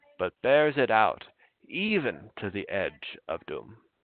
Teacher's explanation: right here we have a trochaic or even a dactylic substitution.